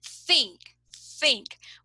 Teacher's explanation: We put our tongue in between our teeth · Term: theta